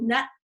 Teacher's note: the closure is at my alveolar ridge my tongue is there it is a t and i just haven't released that